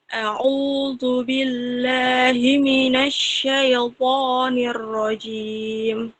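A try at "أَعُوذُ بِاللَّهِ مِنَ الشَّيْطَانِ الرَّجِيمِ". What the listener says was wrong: Nah, kemudian salahnya di syai. I-nya kurang kelihatan. Syaiqo.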